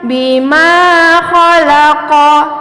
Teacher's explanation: Ketika anak-anak Mualimah memutuskan bacaannya, ko-nya juga harus dipendekkan.